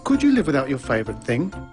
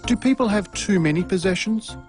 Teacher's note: no type questions Rising interation patterns are used for these questions did you notice the pitch of his voice rise at the end of the questions